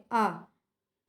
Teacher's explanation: आ हमारा पश्च स्वर में आता है ठीक है पश्च स्वर होता है इसमें यह सीधा कंठ से बोला जाता है